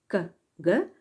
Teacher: The plosives k, g are velar. The back of the tongue is pressed against the area where the hard palate ends and the soft palate begins.